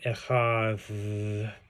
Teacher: the dalet is supposed to be like a th sound, like echad.